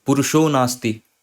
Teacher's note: विसर्ग की जगह ओ आ जा रहा है